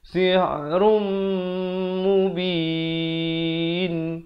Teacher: Sihrum, di sini idgham bi gunnah. Asalnya run, tapi bila datang mim masuk beserta dengung 2 harakat.